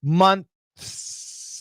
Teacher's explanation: You can see my TH with my tongue, months. And then you can hear my S at the end. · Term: Perfect pronunciation